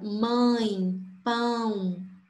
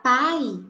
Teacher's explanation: Você vai sentir o nariz tremendo. Se você falar pai, não acontece nada. Você não sente nada. O som sai totalmente pela boca. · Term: ditongo nasal